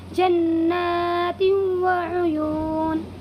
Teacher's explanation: یہاں پر بھی دو زیر کی تنوین کے بعد یہ واو آیا ہوا ہے، اسی لیے اس میں بھی ادغام ناقص ہوگا اور دو زیر کی تنوین کی آواز کو واو میں بدل کر غنہ کے ساتھ ادا کریں گے